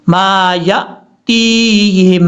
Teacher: یہاں پر یا کے بعد جو حمزہ ہے اس کو جھٹکے کے ساتھ پڑھنا ہے